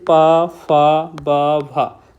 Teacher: अगर आप उच्चारण कर रहे होंगे तो इनमें आपके पूरे ओठ का यूज किया जा रहा है। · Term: ओष्ठ व्यंजन